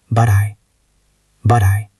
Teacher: When you speak quickly, the T at the end of but often links to the next word. If the next word is I, it sounds like but I, or a soft flack sound.